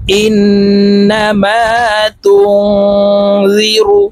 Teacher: নুন সাকিনের পর ইকফার হরফ জাল আসছে, তো এই নুনকে নাকের ভিতরে লুকাইয়া গুন্নার সহিত পড়তে হবে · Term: ইকফা গুন্না